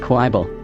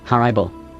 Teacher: I pronounce it with an A sound, like in hard